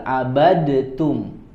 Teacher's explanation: Di situ kalau lihat tulisannya ada huruf dal, abadtum. Tetapi ternyata adanya huruf dal di situ juga tidak dibaca.